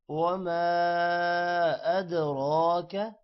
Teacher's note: الف پر مد ہے، دال پر قلقلہ ہے، را موٹا ہوگا